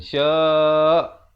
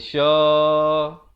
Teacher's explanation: Kalau waqaf ya, hamzah itu mesti ditekankan.